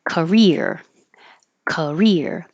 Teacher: The CA is not stressed, so it gets shorter and the vowel changes to k, very short.